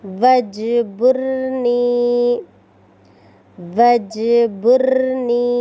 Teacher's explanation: اس جملے میں جیم کو قلقلہ کرنا ہے، را کو پر کرنا ہے، آخری میں یا مدہ کا خیال رکھنا ہے۔